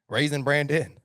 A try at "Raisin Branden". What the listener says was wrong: Why when I say it or Chuck says raising, it sounds like the word raising, but when you say it, it sounds like raisin.